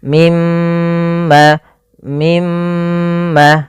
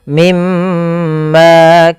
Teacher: ada bacaan gunah pada lafal mim berharakat tasdid